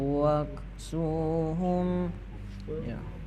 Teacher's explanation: wa bertemu kaf maka itu membacanya harus ada bunyinya angin yang keluar. Jadi wak ya.